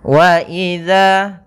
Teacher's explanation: baca D Waza dia sifatnya sifat jahar dan juga apa namanya Dia memiliki sifat rakhawah mengalirnya suara